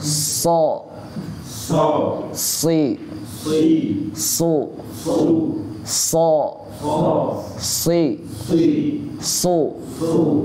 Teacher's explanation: Kalau so dia kena ke gigi seri bawah. Nah, so. Terus suaranya dinaikkan so.